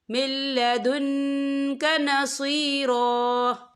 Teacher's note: نون ساکن کے بعد جو ہے لام آ رہا ہے، اور لام جو ہے حروف یرملون میں سے ہے تو یہاں پر ادغام ہوگا، تو ہم اسے بنا غنّے کے پڑھیں گے